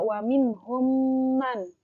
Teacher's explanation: huruf mim bertasydid jadi ini dibacanya dengan dengung dan ditahan selama dua harokat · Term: idgham mimi